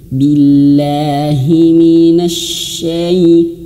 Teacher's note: huruf shinnya dialirkan anginnya